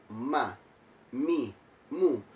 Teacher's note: makhrojul huruf mim yakni di dua bibir yang tertutup mah my mum dan sifatnya pun sama yakni isyraq dibaca dengan